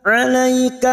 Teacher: huruf ain yang memiliki sifat tawassut dan jahar. Alaika jangan samakan dengan hamzah.